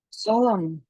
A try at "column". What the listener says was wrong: Column. it's with a k.